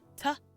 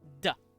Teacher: T is the sound that we have, and it's voiceless. Its voiced counterpart is D.